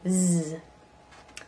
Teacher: Z. So, same positioning as the S, but for a Z or a Z, it's voiced, just like a D or a Th, okay?